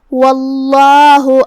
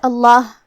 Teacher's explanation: یہاں لفظ الجلالہ کا حکم ہے تفخیم، مطلب ہمیں اسے بھاری آواز میں پڑھنا ہے